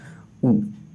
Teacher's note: ऊ ओठ से ही बोला जा रहा है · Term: ओष्ठ वर्ण